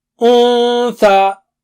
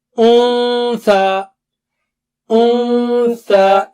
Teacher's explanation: Keep your tongue tip close to the makhraj of tha without touching it, and then do the gunna. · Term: Noon Sakina